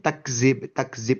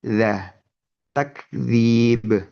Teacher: huruf dzal ini pengucapannya adalah menempelkan ujung lidah ke gigi sari atas. Bukan malah turun.